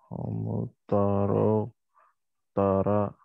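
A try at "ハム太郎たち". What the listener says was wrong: So you said tara, but this is not a tara. Looks like a ra. but it's not.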